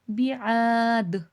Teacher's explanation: قلقلے کی صفات سب سے زیادہ کب واضح ہوتی ہے، جب وہ لفظ وقف ہو رہا ہو یا ساکن ہو رہا ہو۔ اب دیکھیں دال میں یہاں وقف ہو رہا ہے تو ہم کو آواز پلٹ کر سنائی دے گی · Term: قلقلہ